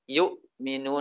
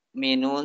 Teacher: terputus antara hamzah dengan suara setelahnya